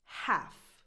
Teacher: The H is strong and the L is non-existent.